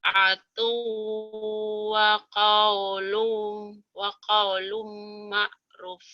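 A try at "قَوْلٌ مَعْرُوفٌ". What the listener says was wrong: Panjang. Panjang. Ma'ruf gitu. Ma'ruf. Ta'atu wa Ta'atu wa qaulun ma'ruf.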